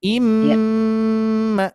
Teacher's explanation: cara bacanya gunnah, dengungkan, dibaca sebanyak 2 harokat gunnah, sama dengan 3 ketukan lamban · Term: idgham mimi